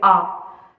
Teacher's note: विवृत में आ, माने खुला स्वर जिसे कहते हैं आ, जिसमें मुंह पूरा खुल जाए